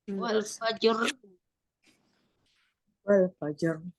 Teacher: wakafnya dengan mensukunkan 2 huruf terakhir, namun bunyi huruf terakhir terdengar lirih, terdengar tidak samar-samar gitu, Mbak.